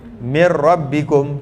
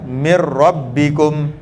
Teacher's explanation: walaupun ra ni ada takrir, tapi hati-hati jangan melebih-lebih dalam takrir je